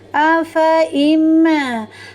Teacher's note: Fa-nya meskipun fathah bertemu dengan huruf alif, aslinya adalah dibaca panjang, tapi ini bacaan gharib, maka fa-nya dibaca pendek.